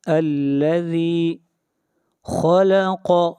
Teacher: خا اور قاف یہ دونوں حروف مستعلیہ میں سے ہیں، ان کو موٹا پڑھیں گے